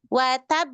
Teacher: Tahan dulu tasydidnya baru ke qalqalah. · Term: qalqalah kubro